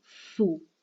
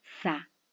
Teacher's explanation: los labios redondeados al decir su y distendidos al decir sa.